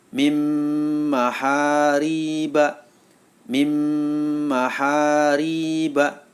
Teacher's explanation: Bighunnah karena ada nun sukun bertemu dengan mim jadi cara membacanya suara Nun masuk ke dalam huruf mim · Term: Idgham Bighunnah